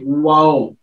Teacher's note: वाओ बोलने के लिए मुझे अपने होंठों को गोल करना पड़ेगा, ठीक है, और होंठ आपस में टच करेंगे, वाओ होंठों की जो साइडें हैं वो टच करेंगे आपस में।